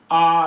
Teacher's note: तो जो अपना बड़ा आ है, ये आ, ये जो है विवृत स्वर, जब इसका उच्चारण करेंगे तो हमारा मुंह है वो अधिक खुलेगा।